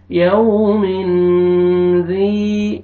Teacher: तनवीन के बाद हरूफ इख्फा में से ज़ाल है, इख्फा करेंगे, नोज में साउंड लेके जाएंगे